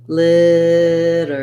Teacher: We have a flap T there, so it sounds like literate. I'll mark that with a schwa and an R.